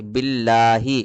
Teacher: با لام زیر بل، لفظ اللہ کے لام سے پہلے کیا ہے؟ زیر ہے، اس لیے اس کو باریک پڑھیں گے